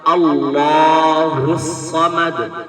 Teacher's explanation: اللہ کا لام موٹا ہو رہا ہے، اور لام کے اوپر کھڑا زبر ہے اس لیے ایک الف کے برابر کھینچ کر پڑھا جاتا ہے